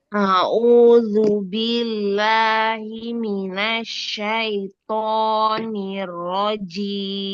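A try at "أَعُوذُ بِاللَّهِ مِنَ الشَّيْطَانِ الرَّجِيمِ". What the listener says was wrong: Billah, langsung ke lam. Bi-nya jangan tamtid.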